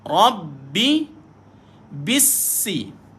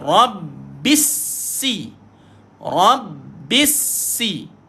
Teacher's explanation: tuan-tuan ada dua sabdu bertemu Rabbi dan bissi ha Rabbi bissi ingat sabdu tahan dan lepaskan dia